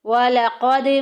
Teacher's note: قاف کو پر ادا کریں گے، دال کو ہلا کے ادا کریں گے کیونکہ یہ حروف قلقلہ میں سے ہے۔